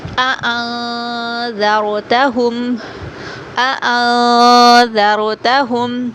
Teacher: را ساکن سے پہلے زبر ہے تو را کو پر موٹا کر کے پڑھیں گے۔